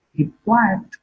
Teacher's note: Quiet is marked with falling tone.